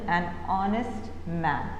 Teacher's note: So what happens is, H is a silent. So, when you speak the word, it automatically starts with the O sound